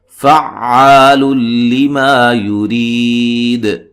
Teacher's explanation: فا کو عین سے سختی سے ملانا ہے، زور سے ملانا ہے